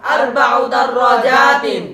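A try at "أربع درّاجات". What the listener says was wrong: দার র টান আছে।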